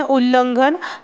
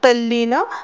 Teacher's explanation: त पुढे ल आल्यामुळे त्याचा ल झालेला आहे